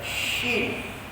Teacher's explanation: Huruf shin tak boleh sebab lidah dia tak boleh melengkung. Huruf shin ni kena pada pertengahan lidah, melengkung kena pada langit.